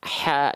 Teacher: H kecil ini kita lihat harakatnya baris atas ya Nah kan dibacanya tetap dengan vokal a ya tidak jadi O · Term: huruf yang tipis